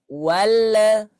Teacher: huruf lam bukan termasuk huruf qalqalah yang memiliki sifat qalqalah, jadi jangan dipantulkan. Ketika lidahnya sudah di atas, jangan dikembaliin lagi.